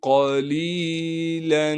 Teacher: قاف کو موٹا کر کے پڑھنا ہے اس لیے کہ قاف موٹے حروف میں سے ہے۔ لام کے بعد یا مدہ ہونے کی وجہ سے لام کو ایک الف کے مقدار کھینچیں گے، اس لام پر اخفا یا غنہ کچھ بھی نہیں کریں گے، لام پر دو زبر کی تنوین کو صاف کر کے ادا کرنا ہے۔